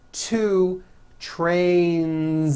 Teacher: Two trains with a voiced Z ending.